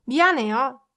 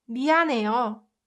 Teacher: no matter how much I try to pronounce this h, 미안해요, it gets muted because of n sound. So this one, you can pronounce it like 미안해요. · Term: h sound